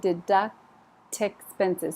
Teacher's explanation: the T is there but it jumped over on the vowel